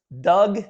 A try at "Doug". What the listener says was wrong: The G is silent. If you don't mind, my family's always gone with dough, but I appreciate it.